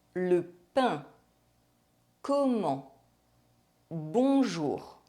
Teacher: The vowel sound is nasalized and we do not pronounce the N or M. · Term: nasal vowels